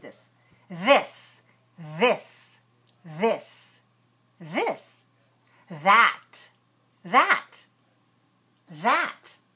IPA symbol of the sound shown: ð